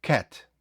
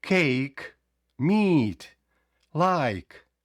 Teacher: Там просто казалося в закритому складі Cat не казалося C а просто короткий звук а в відкритому складі трошки протяжніше У прикладі про відкритий склад де довгі голосні звуки вимова довша